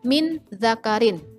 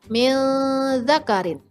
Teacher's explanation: Huruf dzal adalah salah satu huruf ikhfa. Maka bacanya harus didengungkan.